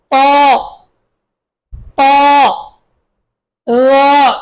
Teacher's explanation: মোটা বলুন ত জিহ্বার আগা দাঁতের আগা